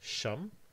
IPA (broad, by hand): ʃʌm